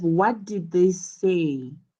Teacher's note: So you notice how say is emphasized, but the intonation falls at the end of the word.